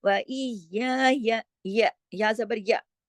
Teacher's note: اب اگلا جو یا ہے اس پہ صرف ایک ہی حرکت ہے، وہ ایک ہی یا ہے، اس کو لمبا نہیں کرنا